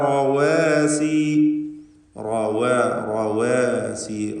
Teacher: വജഅല ലഹ, വജഅല ലഹ റവാസി, റവാസി, റാഇന് മാത്രം തഫ്ഖീം, ശേഷമുള്ള വാവ് അതിൻ്റെ അലിഫ് ഒക്കെ തർക്കീഖ് നൽകി നേർപ്പിക്കേണ്ട അക്ഷരങ്ങളാണ്